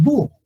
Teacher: en nivel fonético o sea cuando hablamos no funciona la H la H no suena eso lo decimos búho sin la H el gato también es